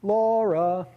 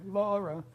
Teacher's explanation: Yeah, so the high, we were just talking about how you do the vocative chant, the high is on the first syllable of Laura